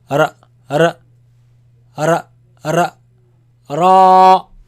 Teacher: this sound actually, it comes from the tip of the tongue touching the front palate roof. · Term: heavy